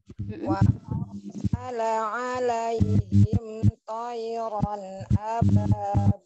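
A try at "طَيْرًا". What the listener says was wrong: Kemudian ini huruf to-nya coba mi. To, tayran ababir. Huruf to ditebalkan yuk.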